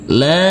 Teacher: Huruf lam kita baca panjang dengan panjang 2 harokat, karena setelahnya ada huruf alif yang tidak berharokat.